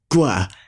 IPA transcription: g:ʷ